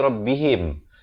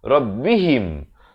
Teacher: Dan him bukan him. Ha baris bawah bunyi hi, bukan bunyi he. Jadi di sini ramai kadang orang silap dia bunyi rabbihim.